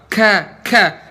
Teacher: Posisinya di lidah paling belakang, bukan di tenggorokan